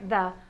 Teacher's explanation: Let's try the voiced the sound first. The voiced the sound will actually vibrate your tongue.